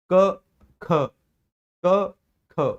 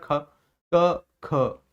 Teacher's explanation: तो आप कहोगे कि सर जैसे ही हम का को बोलते हैं ना, तो इसको बोलने में उतनी वायु बाहर नहीं आ रही, लेकिन जैसे ही खा का उच्चारण कर रहे हैं तो मुंह से ज्यादा वायु बाहर आ रही है। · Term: महाप्राण